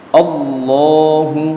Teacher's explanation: bersama-sama jadi ketika dibaca Allah maka itu suaranya tebal atau tafkhim jadi lafadz Allah kalau didahului harokat fathah maka suaranya jadi tebal bacaannya jadi tebal